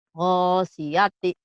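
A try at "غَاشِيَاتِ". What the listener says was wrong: gosyiati, shin. Gosyiati, shin ya, diulang Bu.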